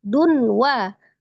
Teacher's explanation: tanwin ketemu dengan huruf waw, idgham bi gunnah, diidghamkan, ditasdidkan disertai dengan gunnah